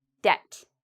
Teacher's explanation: You shouldn't hear the B. I did not pronounce the B because when you have B and right after T, usually you don't pronounce the B.